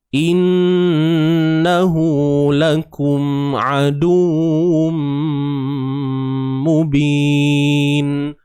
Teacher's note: Lakum mim mati bertemu ain. Kat sini kena izhar. Jelaskan sebutan mim ni. Jelaskan makhraj.